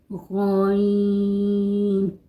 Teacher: غین ادنیٰ حلق سے ادا ہوتا ہے